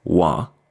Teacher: we usually just drop the T at the end add an extra a and pronounce it wah